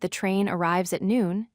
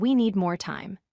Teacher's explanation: Falling intonation starts high and ends low. You drop your pitch on the final word.